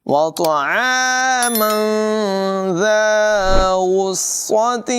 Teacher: ذال کی آواز میں سیٹی ہرگز پیدا نہ ہونے دیں